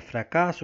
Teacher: tem sua sílaba tônica como a sua penúltima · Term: paroxítona